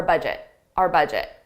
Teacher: I pronounce it just as a very unstressed our